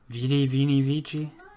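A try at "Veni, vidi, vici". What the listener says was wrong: That's a direct pronunciation of Latin that is wrong. The C is a K.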